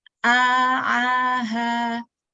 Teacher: Dari bawah, tenggorokan bagian bawah ke tengah ya. A-nya di tengah, ke bawah lagi ha.